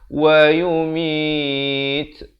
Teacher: wa yumit ada bunyi angin itu, hamas itu, ya.